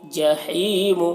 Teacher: اس ہا کی آواز ہوا کے ساتھ میں نکلتی ہے حلق سے